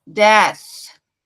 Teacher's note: vai só fazer o unvoiced th então th ser vocalizado Portanto ele é mais um sopro do que um som em si então a língua vai ficar entre as duas Arcadas e eu vou imaginar que tô soprando uma vela eu faço